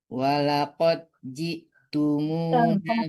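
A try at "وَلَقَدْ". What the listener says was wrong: Dalnya belum dapat. Walaqad dipantulkan dalnya.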